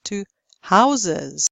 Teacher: but in the plural this S becomes voiced. One house, two houses.